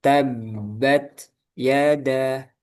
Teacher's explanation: t-nya ada hames, ada udara tapi enggak disambung ke ya